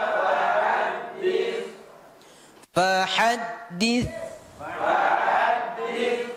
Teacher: ujung lidah mengenai ujung gigi seri atas agak dikeluarkan sedikit